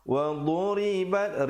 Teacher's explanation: Wa duribat ri jadi nipis, bat ada hamasnya, ada angin di situ